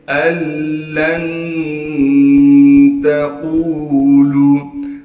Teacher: حمزہ کو لام سے ملائیں گے، لام پر تشدید ہونے کی وجہ سے تھوڑا ٹھہراؤ رکھیں گے۔ لام کو پھر ہم نون ساکن سے ملا دیں گے اخفا یعنی غنّے کے ساتھ۔ · نون ساکن کے بعد حروف یرملون میں سے لام آ گیا، لہٰذا اب ہم اس نون کو نہیں پڑھیں گے، نون کو ہم لام کے اندر چھپا دیں گے۔ حمزہ کو ہم ڈائریکٹ لام سے ملائیں گے۔ کیسے پڑھنا ہے؟ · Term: ادغام